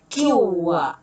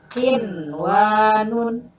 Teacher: Nah, catatan ya, ketentuan bacaan idgham biguna tidak berlaku apabila nun mati berada dalam satu kata ya. Hukum bacaannya wajib dibaca izhar atau bunyi nun matinya dibaca jelas